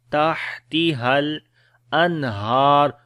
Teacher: Ha we read from the middle of the throat. Tahtihal, ha we connect with the lam.